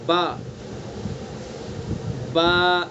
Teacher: یہ سیدھا ہم اس کو پڑھیں گے با، اس طرح سے بے نہیں پڑھیں گے۔ جو بہت سے لوگ بے پڑھتے ہیں نا، بے، یہ غلط ہے، بے نہیں پڑھنا اس کو۔